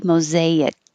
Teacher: you don't have to release the k mosaic hold it there